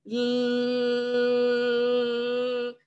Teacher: So if you take your finger and plug your nose while you're doing L, nothing's gonna change. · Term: L sound